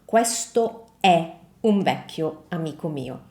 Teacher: when we say is in Italian, that's an E sound, and it's an open E sound